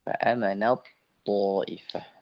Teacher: Akan tapi dia di sini adalah idgham, memasukkan huruf ta ke huruf to.